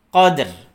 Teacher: Qadr, ya, lailatul qadr. Dalnya dalam kalimat qadr, dalnya memantul ketemu ro sukun. Qadr. Jangan sampai ro-nya tidak ada suaranya atau tidak terbawa.